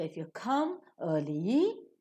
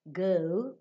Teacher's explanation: a full stop and the sentence is coming to an end so if you come early you raise up girl you fall down